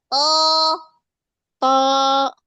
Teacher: Pangkal lidahnya dia tegangin sampai ke ujung. Dia tegang itu sampai ke ujung. Terus bagian ujungnya, ujung lidahnya tempelin pada pangkal gigi seri atas.